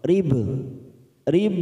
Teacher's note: ba sukun kita pantulkan qala sugro